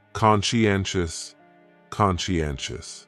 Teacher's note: conscientious has 4 syllables, and the stress is on that third syllable